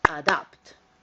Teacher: notice the stress is on the second syllable